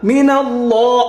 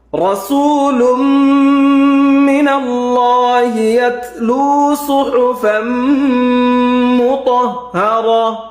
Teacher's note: মিনাল্লাহ লাম মোটা হবে।